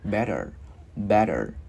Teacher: Chữ T mà bị kẹp giữa rất hay thường biến thành chữ D tiếng Việt, nhưng mà nhẹ thôi nha